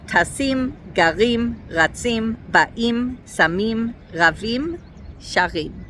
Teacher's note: So aik under the final letter of the sh followed by a yud and then a mess feet and these definitely have the stress on the last syllable